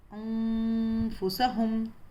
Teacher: غنّہ کرنا ہے اور 2 حرکت اور ناک میں آواز چھپانی ہے